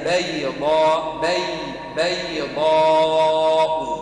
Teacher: رقق في الباء والياء الاثنين كان الضاد مفخمة